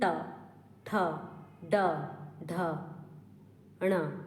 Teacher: जो जीभ का निचला भाग है वो जाकर कहां पर टच हो रहा है मुर्धा में टच हो रहा है